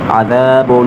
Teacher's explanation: دو پیش پر غنہ ہوگا، ناک میں آواز لے کر جائیں گے